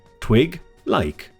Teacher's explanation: the first syllable twig has the main stress